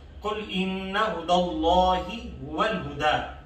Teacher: قل کے قاف کو موٹا اور اِنَّا پہ نون مشدد کی وجہ سے غنہ کیا جائے گا۔ ہُدَى اللہ کا جو لفظ اللہ ہے اس سے پہلے زبر ہے، لفظ اللہ کو موٹا پڑھا جائے گا۔ هُوَ الْهُدَىٰ آخر میں دال ہے جس کے اوپر کھڑا زبر ہے، اور اگر آیت کے اگلے حصے سے ملا کے پڑھیں گے تو کھڑا زبر پڑھا جائے گا، اور اگر سٹاپ اور وقت کریں گے تب بھی پڑھا جائے گا، دونوں سنتے ہیں آپ۔